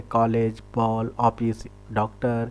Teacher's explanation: यह बिंदु रहित चंद्र है जिसका उच्चारण औ के समान होता है, आ के समान नहीं।